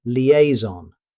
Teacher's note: This word comes from French, so the pronunciation may not match the spelling. Native speakers usually say liaison. Notice that the S sounds like a Z.